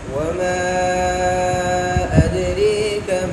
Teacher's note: پہلے اختلاف وما ادریکا کے اندر امالہ ہے، یہ امالہ دونوں راویوں کے لیے ہے۔